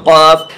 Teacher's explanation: जड़ ज़बान तालू से, नरम तालू से लगकर क़ाफ़ अदा होता है